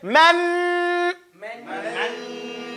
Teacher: Now say man. You see, that's ghunna. It's all in your nose. You're holding it.